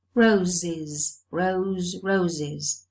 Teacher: the plural morpheme is realized as an extra syllable is because the previous sound is a sibilant.